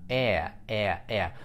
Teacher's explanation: у вас получается язык внизу Это гласный звук низкого подъёма